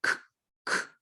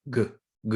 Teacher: A little more air in the k, more voice, more in the throat with the g. Okay, so all these are stop sound.